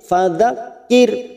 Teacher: ra sukun kita baca tarkik karena sebelumnya ada kasroh